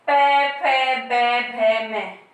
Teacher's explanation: इनका उच्चारण करते समय हम किनका प्रयोग करते हैं? होठों का या ओष्ठ का प्रयोग होता है।